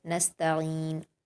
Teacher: نستا پر حرکت ہے، جلد پڑھیں گے۔ عین پر یا مدہ ہے، 2 حرکات کھینچ کر پڑھیں گے۔ نستعین، ٹھیک ہے، آگے وقف کر دیں گے۔